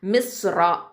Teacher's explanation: மிஸ்ரா. ராங்கிறது ரா ஃபத்தா தஃஹீம், அதனால் அது தஃஹீமாகவே நம்ம ஓதிடுவோம், அதாவது வல்லினமாகவே அந்த ராவை ஓதிடுவோம்